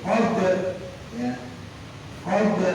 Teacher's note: huruf kolkolanya ba, ya, qalb dia kudu dipantulin